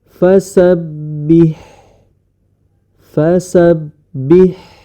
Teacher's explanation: kalau huruf ha sama tempat keluar hurufnya dengan huruf Ain yakni di tengah tenggorokan